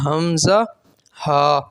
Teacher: حمزہ اور ہا یہ حلقی مخرج ہے، یعنی حلق سے ادا ہونے والا مخرج ہے، اور اسے حروف حلقیہ میں شامل کیا گیا ہے۔